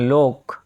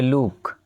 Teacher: ও উ রূপে উচ্চারিত হয় যেমন লোক ওখানে হয়ে যাবে লুক